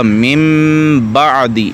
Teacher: آگے اقلاب، یعنی نون ساکن اور تنوین کو میم سے بدل کر اخفا کرنا، جیسے یہاں پہ دیکھیں، اگر دیکھنے میں تو یہ لگ رہا ہے کہ من بعدی ہے، من بعدی ہے، من بعدی، لیکن یہ نون کی آواز میم پہ بدل جائے گی تو یہ ہو جائے گا من بعدی، اس کو اقلاب کہتے ہیں۔